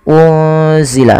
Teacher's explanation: menyamarkan nunnya kepada huruf zai yaitu bacaan ikhfa hakiki